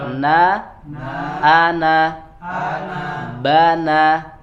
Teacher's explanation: Ba, na, sama-sama tidak boleh masuk ke hidung.